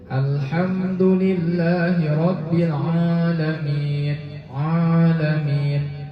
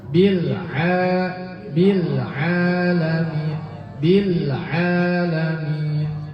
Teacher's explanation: Kesalahan yang sering terjadi di Al-Fatihah ini adalah ketika mengucapkan huruf ainnya masuk hidung Bu.